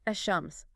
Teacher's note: No L sound, but the she is doubled. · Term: solar letters